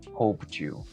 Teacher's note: Sé que estás viendo una D escrita en la palabra, pero fonéticamente esta palabra está terminando con un sonido de T. Ahora, la siguiente palabra está iniciando con un sonido de Y.